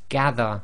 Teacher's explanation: A lot of countries, they pronounce this as a Z sound, so instead of saying dhal, they say zal, which is wrong